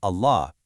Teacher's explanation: The majestic name of God, Allah, is usually pronounced with a really heavy, grand lam.